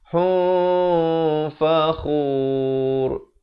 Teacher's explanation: Ikhfa di situ. Asalnya hun, tapi datang fa disamarkan di antara kedua-duanya.